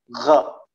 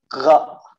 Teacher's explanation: Gha ini memiliki tempat keluar di ujung tenggorokan. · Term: huruf gha